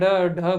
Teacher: उत्सिप्त व्यंजन का अर्थ, उत्सिप्त व्यंजन जो कहते हैं ढ ढ को, ये क्या है कि आपकी जो जीवा है, जीवा को जब आप उच्चारण करेंगे तो जीवा एकदम ऊपर उठेगी और तुरंत ही नीचे गिरेगी, झटके के साथ नीचे गिरेगी, इस कारण इन्हें उत्सिप्त व्यंजन कहते हैं।